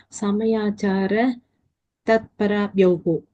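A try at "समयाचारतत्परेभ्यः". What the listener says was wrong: Parabhyaha. Why Parabhyoho? Parabhyaha. Ramayaha, Ramabhyam, Ramabhyaha, Panchami. Replace Rama by Samayachara Tatpara. Samayachara Tatparayaha, Samayachara Tatparabhyam, Samayachara Tatparabhyaha.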